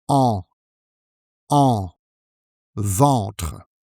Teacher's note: the AH I use stands for a nasal sound. It's actually en. En. You might not notice the difference with a at first, because English doesn't have this sound, so it's a bit tricky to pronounce.